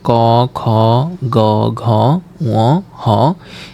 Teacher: এগুলার উচ্চারণের স্থান হচ্ছে যে কন্ঠ ও জিহবা মূল থেকে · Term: কন্ঠ ধ্বনির